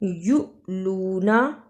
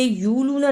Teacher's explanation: یؤلونا، اسے یولونا نہیں پڑھنا، واو کے اوپر حمزہ ہے، اس کو چھوٹا سا جھٹکا دینا ہے۔